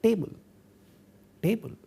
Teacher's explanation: when we speak English, that is our English in India, we say table, table, and then we do have a sound like t, which is clearly a retroflex sound.